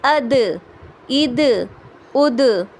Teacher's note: کیونکہ دال قلقلے والے لیٹر میں سے ہے، اسی لیے ہم اس کو قلقلہ کریں گے